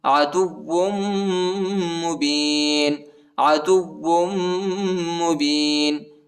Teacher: دال کو واو کے ساتھ ملائیں گے، واو پر شد آیا ہے، ٹھیک ہے، اور واو کو میم کے ساتھ ملائیں گے، ادھر غنہ بھی ہے، ٹھیک ہے۔